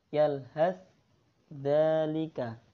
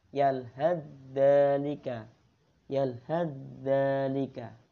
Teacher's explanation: Jadi huruf ta itu seperti hilang. dimasukkan ke huruf dzalnya. Jadi bacanya yalhadzalika. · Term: idgham mutaqaribain